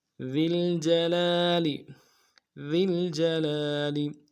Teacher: ذال کو لام کے ساتھ ملانا ہے، ذال کو باریک کریں گے اور جیم کو نون سے ادا کریں گے. لام کے اوپر کھڑا زبر ہے، ایک الف لام میں کھینچیں گے، اگلے لام کو نون سے ادا کریں گے.